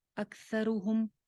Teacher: ہم کی آواز پہ پھر کوئی غنہ نہیں ہوگا، میم کو کلیئر اینڈ کرنا ہے